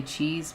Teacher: that high front vowel stretches your lips out into a smile shape, and the ch and the S do nothing to affect your lip shape.